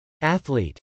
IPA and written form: ˈæθl.it (athlete)